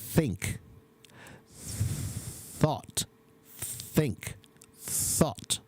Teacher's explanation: the voiceless sound has a lot of air. You can feel the air. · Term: unvoiced TH sound